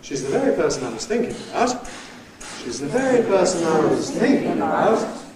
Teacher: It sounds as if we're going down to the bottom, but we jerk back up again, and we have a dip down and up thinking about. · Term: switchback